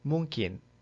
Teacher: It is similar to the N sound, but your tongue tip does not touch anything. Instead, the back of your tongue touches the soft part of the roof of your mouth.